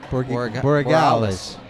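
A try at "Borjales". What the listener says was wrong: I'm pretty sure the G is an H sound in Spanish.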